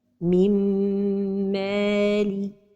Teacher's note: In the case of idgham of nun saakinah with the letter mim, the idgham is a complete idgham with ghunnah. So the letter mim has shaddah because it is a complete idgham. · So the letter mim has shaddah because it is a complete idgham. In this case, nun saakinah is not pronounced. · It means that nun saakinah is at the end of the word and the following word begins with the letter mim. The nun saakinah merges into the letter mim. In the case of idgham of nun saakinah with the letter mim, the idgham is a complete idgham with ghunnah.